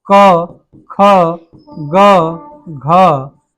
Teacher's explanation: क, ख, ग, घ, ये किससे, हमारे कंठ से बोली जाने वाली ध्वनियां हैं।